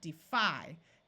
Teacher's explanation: this syllable fi is accented so the Y has a long I sound